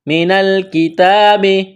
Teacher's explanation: کاف کو باریک کرنا ہے، تا کو باریک کرنا ہے، تا کو ایک الف کے برابر کھینچنا ہے، کڑا زبر ہے۔